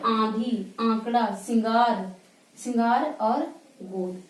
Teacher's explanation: अनुनासिक यानी नाक और मुख दोनों से